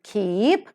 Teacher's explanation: so the three-term label for k, as in K-E-E-P, keep, is voiceless because the vocal cords do not vibrate